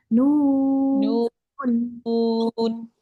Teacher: इसमें भी नू पढ़ते हुए नाक में नहीं जाए आवाज, नू पे नाक में नहीं जाएगी, आखिर में नून पे जाएगी।